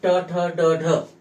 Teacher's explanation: त्यांना त्या मृधेला जिभेचा स्पर्श होतो आणि ट ठ ड ढ यांचा उच्चार होतो म्हणून त्यांना मृदन्य म्हणतात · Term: मूर्धन्य